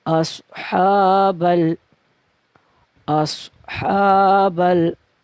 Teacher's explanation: हा के ऊपर खड़ी हरकत है तो खड़ी हरकत को 2 हरकत के जितना खींच के पढ़ेंगे। अस्हाबल, अस्हाबल।